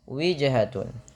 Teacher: pantulkan pada lafal huruf jim yang berharokat sukun, karena ia bacaan qalqalah